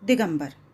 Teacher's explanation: क जब अ से मिला तो ग हो गया और ग जो है वह क वर्ग का तीसरा वर्ण है।